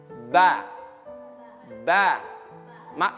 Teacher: Perut bibir bawah bertemu dengan perut bibir atas. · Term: huruf ba